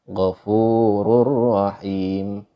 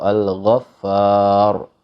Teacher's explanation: Ro-nya dibaca tebal. Kenapa? Karena sebelumnya ada harokat fathah atau dhammah. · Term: tafkhim, dibaca tebal